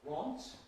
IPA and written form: wɒnt (want)